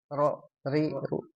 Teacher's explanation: huruf ro memang dia ada getaran tapi jangan berlebihan banget ya